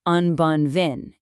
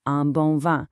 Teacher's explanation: The sound kind of resonates up in your nose, and the N or M itself isn't pronounced hard like we do in English. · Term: nasal sounds